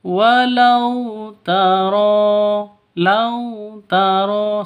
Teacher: sifat lin, lentur, lemes. Tidak boleh disentak, tidak boleh dipanjangkan.